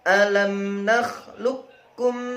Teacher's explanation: Jadi, kualitas qalqalah hilang karena masuk ke dalam huruf kaf akibat kedekatan dengan makhraj. · Qaf sukun bertemu kaf. Karena makhraj mereka berdekatan, maka disebut bacaan idgham mutaqaribain.